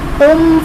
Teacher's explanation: قم میم ساکن اس کے بعد حرف با اور میم کے علاوہ فا رہا ہے، یہاں پر اظہار شفوی کا قاعدہ ہے، یعنی غنہ نہیں کریں گے